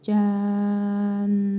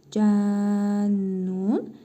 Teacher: Əgər nəfəsimiz çatmazsa, burada dururuq. O zaman nun hərfini cəzimli nun kimi tələffüz edirik və üzərində şəddə olduğuna görə vurğulu tələffüz olunur. Cən kimi tələffüz olunur.